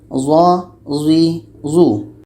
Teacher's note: Za ini letaknya pada ujung lidah menempel dengan ujung gigi seri atas. Ujung lidah menempel dengan ujung gigi seri atas.